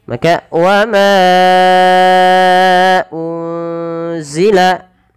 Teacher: Kemudian berlafal unzila, ada nun sukun bertemu dengan huruf apa teman-teman? Huruf zai, maka nunnya disamarkan kepada huruf zai